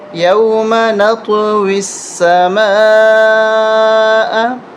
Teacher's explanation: میم الف مد زبر ما، یہ بڑی مد ہے، اس کو 3 سے 5 الف تک کھینچنا ہے